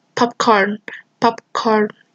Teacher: this plosive P is stopped at the moment of its realization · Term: non-audible allophone